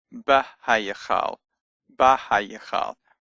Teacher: It has a long ah sound instead of a short eh sound from the vocal shiva that it normally would have. That's because the hay has got absorbed.